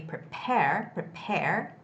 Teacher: The word prepare has the second syllable stress, so it's got to be prepare, prepare.